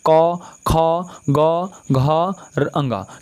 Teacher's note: क, ख का उच्चारण स्थान क्या हो जाएगा, कंठ हो जाएगा